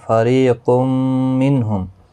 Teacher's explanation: را زیر کی وجہ سے باریک پڑھا جائے گا، یا مدہ بھی ہے، ایک الف کی مقدار کے برابر کھینچ کر پڑھیں گے۔